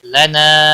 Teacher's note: نا الف مدہ ہے، ایک الف کے برابر کھینچ کر پڑھیں گے۔